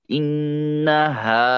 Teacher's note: ہوگا مشدد ہے تو یعنی تشدید والا تو اس لیے انہا ہا کے اوپر مد ہے ہا الف زبر ہا اس کو لمبا کریں گے دو حرکت کے برابر